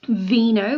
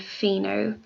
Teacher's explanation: The V is voiced and the F is not, resulting in that slight difference in sound